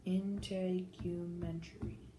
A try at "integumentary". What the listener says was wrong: Yeah, and you kind of made the U long, didn't you? So do that. Do it again long. Integumentary. I think, so I'm not familiar with this word, but I'm thinking the long U sounds better. Integumentary.